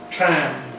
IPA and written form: træm (tram)